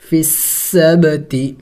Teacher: منکم فی السبت، دیکھیں یہاں پہ اس کو نہیں پڑھیں گے، ہم فا کو اس سین مشدد کے ساتھ ملائیں گے. فا سین زیر، فی سین با زبر سب، قلقلہ کریں گے، با بھی حروف قلقلہ میں سے ہے، ساکن ہے۔